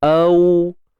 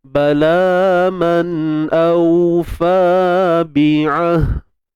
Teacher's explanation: Bila kita sebut au tu, dia memang lembut. Dan pastikan waw kita tu, waw yang mati tu, kita muncungkan bibir lah. Sebab waw ni huruf bibir, syafatain.